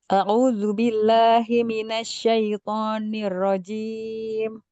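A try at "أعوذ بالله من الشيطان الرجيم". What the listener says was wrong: Kayak di ro itu kayak nirojim. ro-nya itu tidak ada. Nirro. Nirro. Karena tadi sama kemarin juga begitu. A'udzubillahi minasyaitonirrajim. Kayak ro yang tasdidnya di huruf ro itu kayak seperti hilang.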